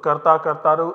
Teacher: accented vowel is retained everywhere without a fail so karta kartaro everywhere you will see the initial vowel remains accented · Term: initial accented vowel